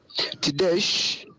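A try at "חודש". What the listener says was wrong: So this is a chet. Chodesh.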